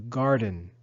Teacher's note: Garden to work in the garden we say is to Garden the accent is on the first syllable